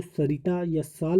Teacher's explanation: जो सरिता या साल वाला सा होता है, इसका उच्चारण स्थान दंत मूल होता है